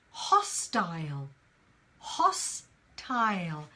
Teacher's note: now in British English we pronounce the last bit as tile